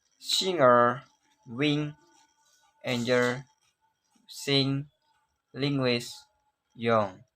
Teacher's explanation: The English nasal N is formed at back of the mouth. Back of the tongue comes up and makes contact with the soft palate. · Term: velar nasal